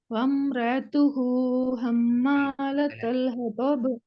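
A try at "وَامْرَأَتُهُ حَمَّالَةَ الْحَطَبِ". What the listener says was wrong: வம்ரா தான் வருது. வம்ரஅத்துஹு நீங்க அவசரப்படுறீங்க. நீங்க நான் சொன்னது போல ராக்கு பின்னால டைம் எடுக்கும். வம்ரஅத்துஹு என்று நீங்க பிராக்டிஸ் பண்ணி ஃபர்ஸ்ட் பழகணும்.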